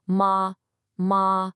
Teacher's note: The first tone is high and level. There's no change at all. It's like holding a single musical note.